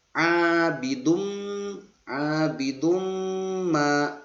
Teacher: didengungkan sampai 2 harokat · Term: idgham bi gunnah